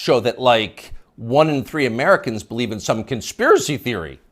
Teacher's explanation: the upspeak, the rising inflection at the end of the sentence